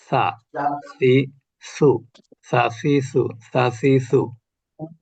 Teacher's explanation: এটার মাখরাজ হলো জিহ্বার আগা, উপরের দাঁতের আগা